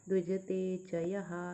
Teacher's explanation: विसर्ग लास्ट में है, तो हा यह बोलेंगे